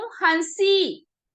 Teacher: हंसी बोलने पे जो हमारे मुंह से हवा निकल रही है ना, वो नाक और मुख दोनों से निकल रही है। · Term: अनुनासिक